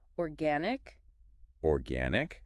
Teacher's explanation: So the stress is on the second syllable, gan.